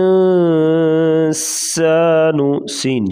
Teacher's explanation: سین، سیٹی جیسی آواز، سخت